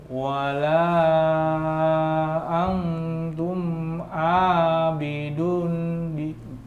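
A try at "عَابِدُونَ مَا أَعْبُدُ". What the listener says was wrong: Panjang dunya.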